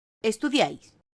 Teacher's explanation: una secuencia de tres vocales que se pronuncian en una misma sílaba. Es decir, cuando en una sílaba tenemos tres vocales, una a continuación de la otra. · En este caso, la última sílaba de la palabra estudiáis tiene tres vocales, I, A e I nuevamente. La primera y la tercera son vocales cerradas, mientras que la segunda es abierta, y como están en una misma sílaba, forman un triptongo.